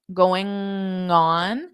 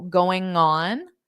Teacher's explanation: So for that G to the O sound, you can hold that G sound, going on, and pronounce it out with the O